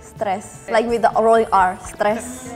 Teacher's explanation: In Indonesian, we say stress like with the rolling r